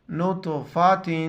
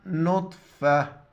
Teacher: یہ جب گولتا ہے وقف کی حالت میں ہا میں بدل جاتا ہے، وقفا نطفہ، آخر میں ہا ظاہر کرنا ہے۔